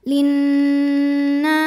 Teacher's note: ada hukum alif lam yang dinamakan dengan alif lam syamsiah sebab ada alif lam yang menghadapi huruf Syamsiah yaitu Nun maka alif lam tidak dibaca